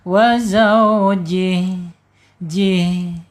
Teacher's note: Jih disukunkan ya karena wakaf dan harus dialirkan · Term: hames, hamas